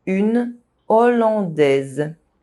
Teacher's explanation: the aspirated H prevents consonant links.